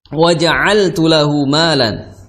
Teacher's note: ain di tenggorokan pertengahan ya, makhrajnya di tenggorokan